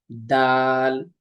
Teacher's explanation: দালটা উচ্চারিত হয় জিহ্বার আগা সামনের উপরে দুই দাঁতের গোড়ার সঙ্গে লাগিয়ে